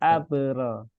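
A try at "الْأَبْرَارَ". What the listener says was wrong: Nah, itu masih ada hamzahnya dikit tuh.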